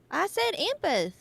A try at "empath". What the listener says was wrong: It's not empath. Empath sounds like you're lisping. Over pronunciating it.